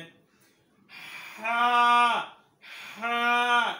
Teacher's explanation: হরফ উচ্চারণ করার সময় গলা চিপিয়ে পড়িতে হইবে।